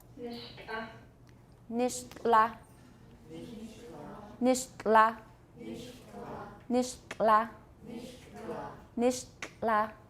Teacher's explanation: Keep your tongue tip on your alveolar ridge, making the T, and then the air is going to come out the sides of your tongue.